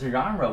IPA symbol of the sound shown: ʒ